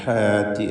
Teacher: ഹാത്തി എന്ന് പറയുമ്പോൾ ഹാൻ്റെ അലിഫിൽ തർക്കീഖാണ്, ഇസ്തിഫാലിൻ്റെ അക്ഷരമായതുകൊണ്ട്